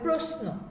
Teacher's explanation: কখনো কখনো কি হয়, তালব্য স এর উচ্চারণটা হয় দন্ত স এর মতো, বা ইংরেজি এস দিয়ে যে কথা বললে আমরা যেরকম ভাবে উচ্চারণ করি সেরকম, মানে যুক্ত অবস্থায় তালব্য স এর সাথে যদি দন্ত ন আসে তাহলে তার উচ্চারণটা হবে ইংরেজি এস এর মতো বা বাংলায় দন্ত স এর মতো